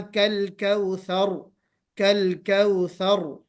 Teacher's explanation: रा को मोटा पढ़ना है, रा मोटा पुर पढ़ा जाएगा